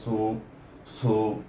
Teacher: sad baris depan bunyi su hamas sikit, ada angin bunyinya bila sebut sad itu